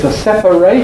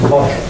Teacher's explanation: adjective with identical spelling but different pronunciation you probably know that the at suffix is pronounced eight in verbs so the verb is to separate and the verb is to moderate but in adjectives we get a weak suffix